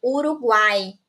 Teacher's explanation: A gente tem aqui o U, que é uma semivogal, o A, que é uma vogal, e o I, que é uma semivogal, né? Que a gente perde um pouco dessa força quando a gente realiza a leitura e a pronúncia dessa palavra. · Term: tritongo